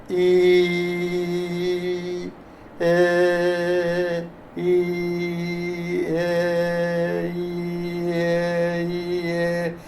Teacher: ഈ എന്ന് പറയുമ്പോൾ നാവിൻറെ മുൻഭാഗം ഉയരുന്നുണ്ട്